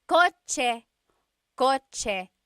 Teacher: The ch sound is a TS combination. Coche, coche, car is coche with a TS spelling.